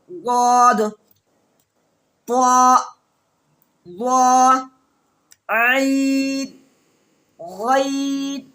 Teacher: जबान की करवट करके ऊपर के दाढ़ की जड़ में लगाएंगे